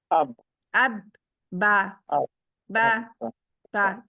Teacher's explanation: दोनों होंठ इस्तेमाल है। और दोनों होंठों का गीला हिस्सा इस्तेमाल होता है। बा के लिए आपने लिखना है साथ में, गीला हिस्सा इसका इस्तेमाल होता है, जो आपकी लिपस्टिक के बाद का है, अंदर की अंदरूनी तरफ।